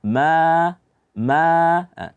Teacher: wama panjang daripada A itu tidak ada ghunah karena pada dasarnya yang ada ghunah itu hanya huruf mim saja bukan Alif yang berada di depan